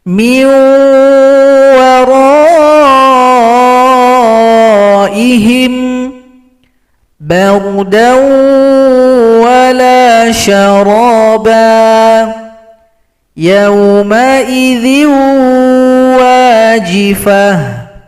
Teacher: Kita lihat pada huruf waw juga digabung atau dilebur bunyi nun dan tanwinnya. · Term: idgham bi gunna